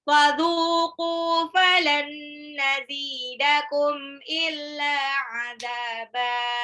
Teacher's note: Falan nazi, nun sukun ketemu nun itu idgham bil gunnah.